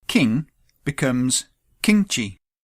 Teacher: Now, the keen-eyed among you may have spotted that pronouns which end with the pure nasal sound ng, the nigahita, when the particle chi is added, it changes to a palatal sound.